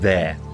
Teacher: There's no attempt to enunciate the R sound in the word. It's just there. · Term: lazy tongue